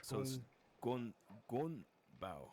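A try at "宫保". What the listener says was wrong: Gong. No, gun. Gong. Go. If you say you go. Gong. With the NG at the end. And then bao.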